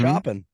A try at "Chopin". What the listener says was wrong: You're chopping like you're chopping wood.